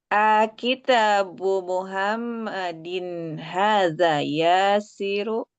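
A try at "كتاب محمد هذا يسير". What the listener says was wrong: tidak panjang. Hanya tidak panjang.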